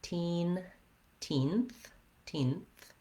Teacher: So it has a tense E and then another voiceless TH at the end.